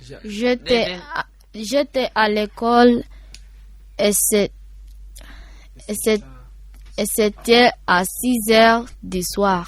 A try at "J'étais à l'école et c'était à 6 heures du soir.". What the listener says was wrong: Très bien, applaudissez.